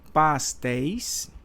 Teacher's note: Olha aqui o ditongo aberto, ei